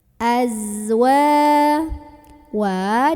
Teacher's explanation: ada magnetnya karena ada Alif sebelumnya ada huruf yang berbaris fathah maka cara membunyikan huruf wownya ini dipanjangkan sepanjang dua harokat saja